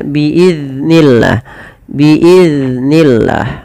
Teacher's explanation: Pada lafal biiznillah jangan dibaca dengan memantulkan huruf zal.